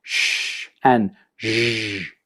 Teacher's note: The blade of the tongue that's actually coming up to the hard palate, and then that's where that friction is happening. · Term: alveopalatal fricatives